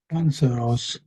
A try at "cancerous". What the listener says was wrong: So you you're still doing sort of this Ross sound on the end. Ross. It's not really Ross.